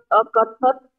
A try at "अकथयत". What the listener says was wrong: अकथत नहीं, य का उच्चारण ही रह गया। अकथयत। अकथयत आचार्य, बाकी सही है।